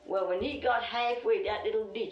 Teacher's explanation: lumbee english speakers share vowel sounds present in the outer banks accent where tide is pronounced toyed